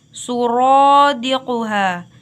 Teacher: dibaca tafkhim atau tebal karena huruf ra berharakat fathah